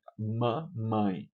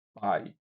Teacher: O lábio inferior e o lábio superior se encontram, por isso que ela é bilabial.